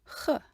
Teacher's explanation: puff of air being pushed up through a relatively open throat constrict the air channel a little tiny bit with the back of the tongue and you've got huh